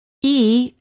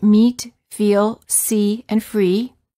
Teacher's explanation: to correctly produce each of the vowels e as in meat the lips are slightly smiling tense and not rounded and the tongue is tense it is high and far forward near the roof of the mouth